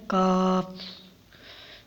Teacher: زبان کی جڑ اور تالو کے سخت حصہ سے ادا ہوتا ہے